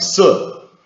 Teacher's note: such a merger between se and shi. It's really both pronounced something like se.